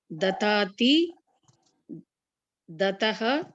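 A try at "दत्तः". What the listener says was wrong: Dattaha, that is double ta. Datta. It's not here, it's the, tha. Dattaha.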